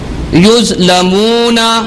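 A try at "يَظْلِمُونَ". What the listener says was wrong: واو کو صحیح پڑھیے.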